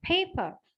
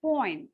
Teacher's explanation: there's a kind of aspiration paper but when I say point I said Point there's there's no gasping there Point simple paper point is different because of the position one